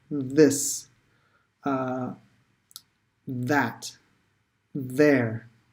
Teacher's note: make sure you're sticking your tongue all the way through your teeth and then blow so there's vibrations